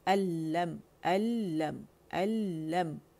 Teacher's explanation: لم الم اظہار کریں گے میم کا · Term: اظہار شفوی